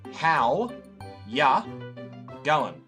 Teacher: We say, how ya going, as sort of like one big word almost.